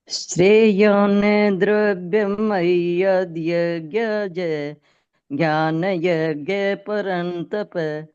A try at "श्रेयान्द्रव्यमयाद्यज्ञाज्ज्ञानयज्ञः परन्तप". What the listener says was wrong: ये आप जय पूरा बोल दिया, जय आधा है। श्रेयान द्रव्यमयाद्यज्ञाज ज्ञान यज्ञ परन्तप।